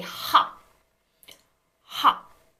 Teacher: When you pronounce the word hop in English, you don't release the P with aspiration. There's no like release of air when you say it. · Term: tensed